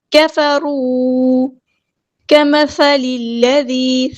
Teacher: ذال کو باریک نرمی سے ادا کرنا ہے، لائٹ لیٹر ہے